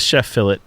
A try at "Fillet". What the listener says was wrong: The T is not silent.